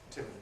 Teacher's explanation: Air is escaping through the nose in the case of the [m]. We have to cut off that escape by raising the soft palate, which turns [m] into [b] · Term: nasal approach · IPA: [ˈtɪmbə]